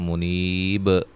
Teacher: منیب جب وقف کریں گے تو منیب، با پہ قلقلہ اور مد عارض وقفی